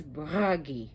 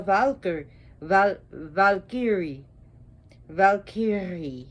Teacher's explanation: Notice how I rolled my R's. All the R's are rolled. You could say Bragi, but Bragi if you can pronounce it that way.